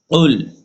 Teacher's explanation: কফ লাম পেশ উল। পেশে ঠোঁট গোল হয়, ঠোঁট গোল করতে হবে।